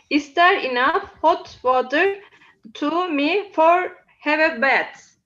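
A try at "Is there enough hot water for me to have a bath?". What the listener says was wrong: So first of all, your tone. Okay, so it's answerable by yes or no. Okay, is there enough hot water? Blah blah blah. Have a bath. Okay, so rising intonation.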